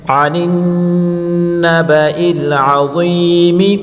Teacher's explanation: عین کو حلق کے بیچ سے نکالیں گے اور ضا کو پر پڑھیں گے